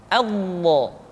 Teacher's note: huruf d diucapkan dengan menyentuhkan Sisi lidah kita dengan geraham-geraham atas boleh salah satu sisi disentuhkan dengan salah satu Graham atas kita